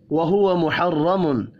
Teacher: را زبر کی وجہ سے پر پڑھیں گے